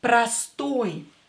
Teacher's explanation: because we have oil ending and it's stressed here pastoy again o will be pronounced as a because it's not stressed